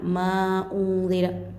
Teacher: नून साकिन के बाद इख्फ़ा करना है, गुन्ना और इख्फ़ा के साथ